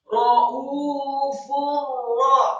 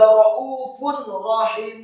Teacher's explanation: huruf fa yang harokatnya marfu' atau dhammah tanwin bertemu dengan huruf ra, maka hukum bacaannya adalah idgham bila gunnah